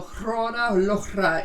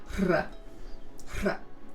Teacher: It's a ch sound with an unvoiced R trill.